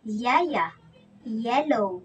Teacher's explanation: Ang pakatal ay may isang ponema na nabibilang sa malapatinig. Ito ay ang Y na binibigkas na ya, ya, ya, ya.